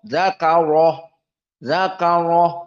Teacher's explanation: Lihat dzakarah di sini harus dalam keadaan tafkhim ra.